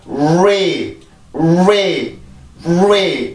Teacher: 그러면 자음들이 들어가서 자, 앞에 있는 발음은 지금 음절의 시작이 R 발음이죠. 음절의 시작이 R 발음일 경우에는 입술이 굉장히 많이 나와서 소리가 먼저 나오게 돼요. 이게 이 역시도 강세로 올라가기 위해서 준비 동작을 해주는 거죠.